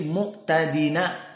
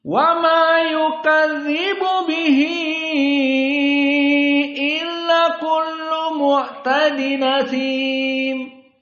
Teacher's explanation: hamzah dihilangkan dan harokat hamzah dipindahkan ke nun yang tadinya nun sukun mu'tadin menjadi mu'tadina, langsung masuk kepada sim, mu'tadina sim. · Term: an-naql